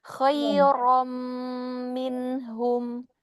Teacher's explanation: Ronya juga hati-hati bukan khairam ram ya, tidak rem tapi rom ya.